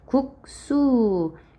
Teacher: 앞에 기역, 뒤에 시옷처럼 예사소리가 올 때에, 즉 안울림 예사소리가 올 때에 뒤에가 된소리로 나지. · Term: 된소리 되기